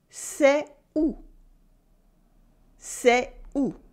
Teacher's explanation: And we don't do la liaison, okay? Between est and où.